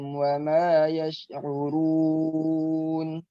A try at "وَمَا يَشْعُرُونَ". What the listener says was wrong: Ora kan tebal ya. Ora, ri, uru. Wa ma yash'urun, urun. Kurang tebal sedikit aja. Antum tebalkan sedikit. Ora, ri, uru. Wa ma yash'urun, urun.